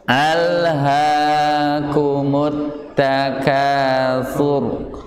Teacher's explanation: Kalau ra yang ayat pertama dibacanya tafkhim karena didahului dengan huruf yang berharakat dhammah